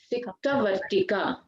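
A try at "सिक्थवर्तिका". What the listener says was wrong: Siktha. Tha is the second tha. This one. This tha should come.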